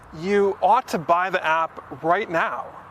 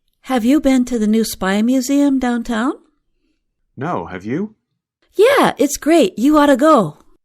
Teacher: Ought to changes to oughta.